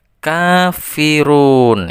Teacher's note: K-nya itu dibaca 2 ketukan atau 1 alif. Kemudian run itu dibaca 3 ketukan sampai dengan 5 ketukan. Karena dibaca mad arid.